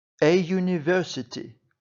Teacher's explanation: у слові University перша літера ю голосна але вона починається з приголосного звуку й